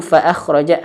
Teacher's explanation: bibirnya sudah nyentuh ke ujung gigi seri atas.